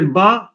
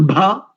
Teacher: पांचों वर्गों के लिए ये जो कुछ वर्ग हैं, पांचों वर्गों के लिए एक बात बताई गई कि एके अल्प प्राणा इतरे महाप्राणा, कि प्रथम को अल्प प्राण से बोलो और उसके आगे वाले को महाप्राण से बोलो। जैसे बा अल्प प्राण वाला है और भा महाप्राण वाला है, और महाप्राण में भी घोष बनता है इत्यादि।